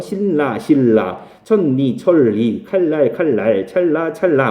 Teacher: 발음이 니은이 리을 따라서 리을로 바뀌어버리는 그런 것들을 유음화라고 얘기를 합니다. · 니은과 리을이 만났을 때 뭐 앞뒤로 만났든 뒤앞으로 만났든 니은이 리을로 바뀌어버려요.